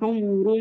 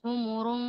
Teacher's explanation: خلي الشفايف كلها مضمومة في حمر